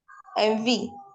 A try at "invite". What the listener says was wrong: Envy. So the T is to be pronounced. Envy. Say it.